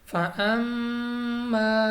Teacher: میم مشدد غنہ کر کے پڑھیں گے، غنہ کی مقدار 2 الف کے برابر ہے ، جیسا کہ ہم مدہ کو پڑھتے ہیں 2 الف تک